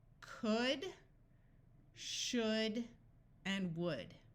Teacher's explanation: Notice that in all 3 words, the L's are silent.